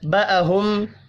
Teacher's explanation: میم ساکن کے بعد با ہے، اخفاء شفی ہوگا